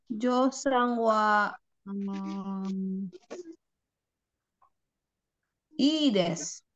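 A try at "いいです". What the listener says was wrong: Ides enggak apa-apa, enggak apa-apa, bagus ides enggak apa-apa betul.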